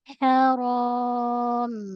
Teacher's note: pada mim ada satu kali gunnah